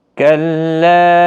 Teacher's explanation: یہاں پر مد منفصل ہے، 3 الف کی مقدار کے برابر کھینچ کر پڑھیں گے